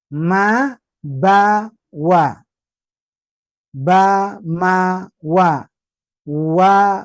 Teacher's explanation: Yang penting tiga huruf ini keluar dari dua bibir